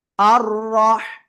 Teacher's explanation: হাটা গলা চেপে বাতাস বের করতে হবে।